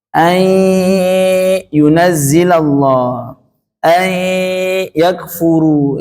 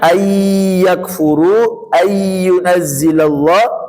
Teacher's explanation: Tapi kalau dipencet hidungnya bunyinya ay yakfuru, ay yunazzilallah, tidak ada suara hidung, maka belum disebut idgham bi gunnah. Jadi idgham bi gunnah harus menekan ya disertai sengau suara. · idgham bi gunnah, melebur disertai gunnah, melebur disertai suara hidung